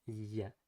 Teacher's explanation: the tongue comes much more forward, ya, and has more tension